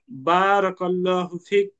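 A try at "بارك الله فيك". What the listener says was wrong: আপনাকে একটু বা তে টান আছে তো ওইটাকে টানতে হবে।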